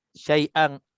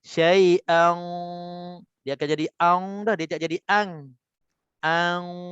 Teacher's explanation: Dia akan tebal. Dengung tu dia akan tebal. Sebab tu dengung pun dia ada tebal nipis. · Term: dengung tebal